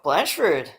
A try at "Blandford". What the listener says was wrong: you got to pronounce the D.